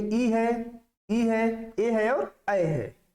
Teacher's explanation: जीभ के अगले हिस्से से जो स्वर निकलते हैं उनको अग्र स्वर के नाम से जाना जाता है। इसमें ई है, ए है और ऐ है।